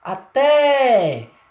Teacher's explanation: forte aí recai sobre a vogal é o até percebe que a pronúncia mais forte mais demorada é na vogal é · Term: vogal tônica